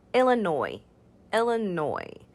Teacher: the s at the end there is silent so we just say illinois